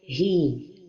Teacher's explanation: Il ne faut pas donner de l'air en plus pour la lettre ha